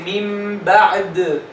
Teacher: In the case of waqf, for example, you say min ba'di. If you stop on the word min ba'di, you say min ba'd. So you pronounce two consecutive sukun.